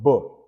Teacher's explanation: So we say that b is a voiced, bilabial, plosive, or a stop.